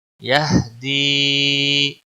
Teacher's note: یا ہا زبر یہ، دال یا زیر دی، یہ دی، ہا کا خاص خیال رکھنا ہے، وسط حلق والا نہیں ہے، یہ نرمی والا ہا ہے، سینے کی طرف سے سانس چھوڑتے ہوئے اس کا مخرج